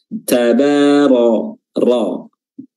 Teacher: ra sendiri makhrajnya adalah ujung lidah bertemu dengan langit-langit bagian depan